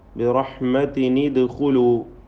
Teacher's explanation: തൻവീൻ ആണെങ്കിൽ ബി റഹ്മത്തിനിലൂ എന്ന് കസ്റുള്ള നൂനാക്കി മാറ്റി കൊണ്ട് തഹ്രീഖ് ചെയ്യണം